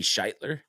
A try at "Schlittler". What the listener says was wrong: It's not shit. It's Schlittler. Yeah, that's it.